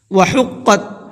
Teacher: حا کو حلق سے نکالنا ہے اور قاف کو منہ بھر کے پڑھنا ہے اور ڈبل پڑھنا ہے، حقت نہیں پڑھنا ہے اس کو، بلکہ حقت۔